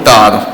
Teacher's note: kita melepaskan lidah di bahagian gusi atas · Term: syiddah